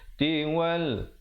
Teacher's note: Di situ alif lam qamariyah, lamnya disebutkan dengan jelas.